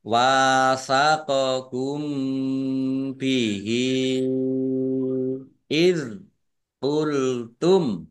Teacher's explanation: Mim sukun bertemu dengan huruf ba, bacaan ikhfa syafawi, dibaca samar-samar.